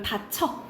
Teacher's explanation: 쓰기는 여로 쓰지만 발음은 어로 한다라고 보시면 돼요